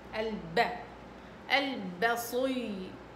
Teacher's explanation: البا شديدة، لا تعملوها بدلع، شدة شدوا عليها، يعني ضربوها بقوة